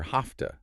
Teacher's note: because that v sound in have is gone